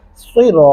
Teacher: अगर आप सिरा पढ़ेंगे, सीन लगाएंगे तो गलत होगा। सिरा, रा को मोटा और पुर करके पढ़ेंगे